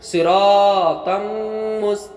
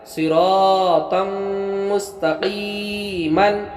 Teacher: یہاں پر دو زبر تنوین میم آیا تو یہاں ادغام بالغنہ ہوا